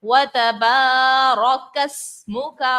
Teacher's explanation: رو پر ہم نے دیکھا زبر ہے، اور اس صورت میں ہم رو کو پر پڑھتے ہیں. یہاں پر ہم نے رو کو پر بھی پڑھنا ہے.